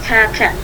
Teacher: Jadi harus ada hammasnya, harus ada nafas yang berhembus.